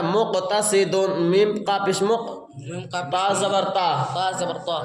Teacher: سرا زبان اوپر کے سامنے والے دانتوں کی جڑ سے تا ادا ہوتے ہیں